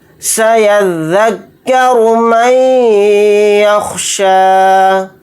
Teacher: را کو یہاں پر موٹا یعنی پر پڑھیں گے کیونکہ را کے اوپر پیش ہے